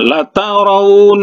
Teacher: nunnya itu bertasydid, jadi digunakan gunnah musyaddah, ya. Nun bersabdu, ya, bertasydid, ya.